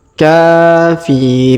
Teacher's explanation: huruf k kita panjangkan dua harakat karena ada Alif kecil di atasnya